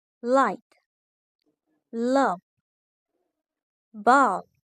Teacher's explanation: is literal approximate. Air flows around the sides of the tongue. Tongue touches the alvea ridge.